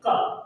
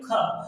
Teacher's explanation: हाथ लगा के देखिएगा क हाथ में वायु नहीं टकराए और जब ख का उच्चारण करेंगे ख तो हाथ में वायु टकराए गी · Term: महाप्राण